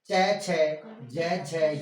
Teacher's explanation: च छ ज झ य य और श का उच्चारण स्थान तालु होता है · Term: तालव्य